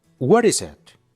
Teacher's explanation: La primera te la pronunciamos como una r suave